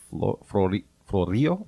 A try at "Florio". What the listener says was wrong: You're supposed to roll the R in a name like that.